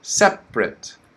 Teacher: that first uh syllable is still stressed and the second one is with the schwa